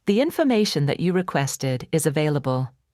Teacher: The stressed syllables are information, requested, available. Everything else gets squeezed in between. Native speakers might say this as, "The information that you requested's available," dropping sounds and compressing unstressed parts.